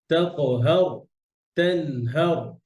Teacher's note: এই যে তানহার হার এটাও মোটা জবরের পরে র সুকুন মোটা এই যে জবরের পরে র সুকুন মোটা